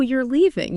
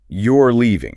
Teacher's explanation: with rising intonation. It becomes a question